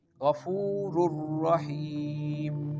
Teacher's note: tanwin which is double dammah merging with the next letter which is ra and giving the sound ghafurur rahim. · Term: idgham